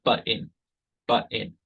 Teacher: A lot of dialects, for instance, of English, pronounce the word button. They don't really pronounce the t. They say button, button. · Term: glottal stop